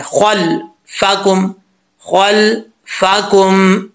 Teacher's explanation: یہ خوا حروف مستعلیہ میں سے ہے، اس کو پر پڑھیں گے · خوا حروف مستعلیہ میں سے ہے، اس کو پر پڑھیں گے، اور آگے جو لام آ رہا ہے جس کے اوپر جزم ہے اس پہ قلقلہ سے بچیے گا